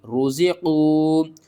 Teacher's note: را پیش رو، زا زیر زی، قاف واو پیش قو، رزقوا، واو ساکن سے پہلے پیش ہے، حروف مدہ ہے، 1 الف کے برابر کھینچ کر پڑھیں گے